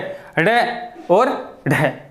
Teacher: जीवा जो है वो 2 बार स्पर्श करती है, 2 बार स्पर्श करती है। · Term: उत्क्षिप्त